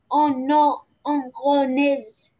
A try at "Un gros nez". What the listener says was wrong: Un gros nez. Nez. On ne prononce pas le Z. Hein? Nez. Without Z. Nez.